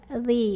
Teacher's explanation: Ujung lidah ketemu ujung gigi atas.